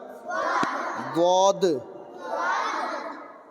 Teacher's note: कनारा जबान दाढ़ से मिलकर दाढ़ से मिलकर दद अदा होता है